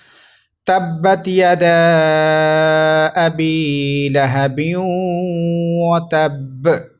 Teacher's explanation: اب ہم وقف کریں گے تو وقف کی صورت میں جو قلقلہ مشدد ہے یہ تو جماؤ کے ساتھ ہوگا لیکن زبر ختم ہو جائے گی